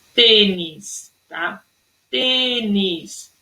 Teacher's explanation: o acento circunflexo ele é de forma mais fechada